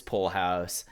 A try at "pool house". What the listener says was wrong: Okay, you're saying pull, You're saying pull house? Pool. Pool. Is this a Texan thing?